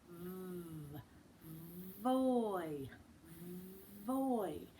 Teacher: My one bottom lip is under my teeth, and it's a long sound. V. Voy. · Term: V sound